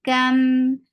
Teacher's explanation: Kaf is light for fatha open jaws attached with meme.